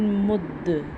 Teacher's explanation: اسی طرح میم سیدھا پیش، دال ساکن مد، کیونکہ دال بھی حروف قلقلہ ہے جیسے با حروف قلقلہ تھا تو ہم نے اس کو تھوڑا سا قلقلہ کیا ہے۔ قلقلہ کا مطلب ہوتا ہے حرف کو تھوڑا سا ہلانا۔